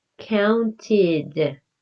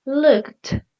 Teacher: The ed sounds like a t, like really strong